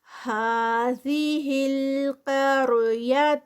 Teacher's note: ہا پہ 2 کاؤنٹس کھڑی زبر ، ذی ہل قار قاف ہیوی، آگے را سے پہلے زبر